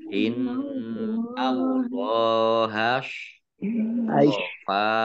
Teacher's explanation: shot ya agak mecucu gitu. Jangan sama dengan sin.